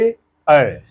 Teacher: कंठ और तालु दोनों के सम्मिश्रण से इसे बोला जा रहा है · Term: कंठ तालव्य